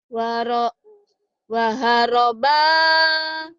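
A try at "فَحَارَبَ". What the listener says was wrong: F bukan wa.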